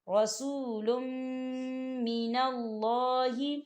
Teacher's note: دیکھیں لام کے اوپر تنوین ہے اور اس کے بعد میم آ رہا ہے، میم کے اوپر تشدید ہے، اور ہم جو ہے تنوین کو جو ہے میم کے ساتھ ملا کر پڑھیں گے، یعنی کہ تنوین کو ہم میم کے اندر مدغم کریں گے